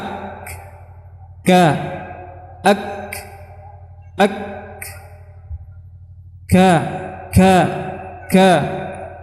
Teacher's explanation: Jadi mengalirnya pada huruf kaf ini, hamas adalah mengalirnya banyak dari udara setelah dia tertahan, ya. Kemudian tidak bergetarnya dua pita suara.